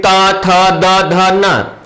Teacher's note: फिर त, थ, द, ध, न ये दंत से बोले जाते हैं। जब हम इनका उच्चारण करते हैं तो जिह्वा ऊपरी दांत से जाकर के टकराती है। त, थ, द, ध, न इसलिए इसे दंत वर्ण कहा जाता है।